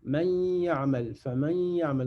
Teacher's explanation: C'est le nasillement, c'est quand ça sort absolument du nez.